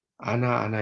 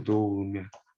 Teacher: 히읗이 모음으로 시작된 어미 앞에서 탈락된 거죠. 그러니까 일종의 히읗 탈락이라고 보시면 되겠죠.